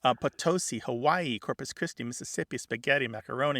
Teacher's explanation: It goes from either some value of a short or a long I to becoming a schwa